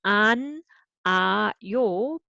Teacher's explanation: ㅎ becomes silent. So you don't read it. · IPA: [안 아 요]